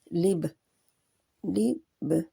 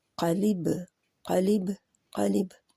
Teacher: पहले होंठ बंद होंगे और फिर खुलेंगे, तो बा के ऊपर कलकला हो जाएगा